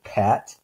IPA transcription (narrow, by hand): pʰæt